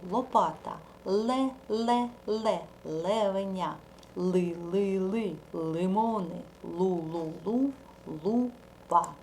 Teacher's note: а струмінь нашого повітря повинен проходити по краям язичка голосовий зв'язки дзвинять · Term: звук л